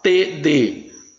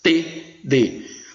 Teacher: Língua dental, T, D. A língua bate nos dentes superiores.